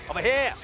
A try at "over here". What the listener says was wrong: No, no H. Just over here.